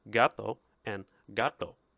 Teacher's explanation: there is no alveolar T and D in Spanish T's and DS are always dental so there's no contrast between the dental and the alveolar T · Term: dental T and D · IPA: t̪ d̪